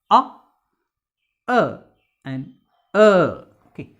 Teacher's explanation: we have three three central vowels ah so this ah sound it is articulated with the central part of the tongue and it assumes a position between open and half open and the lips are remaining flat so it's a nun rounded between open and half open central